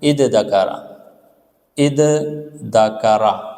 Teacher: تو ہم نے اس زال کو بھی دال سے تبدیل کریں گے، اس تا کو بھی دال سے تبدیل کریں گے، تو یہ بن جائے گا اد دکرا، اد دکرا۔